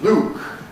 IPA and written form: luːk (Luke)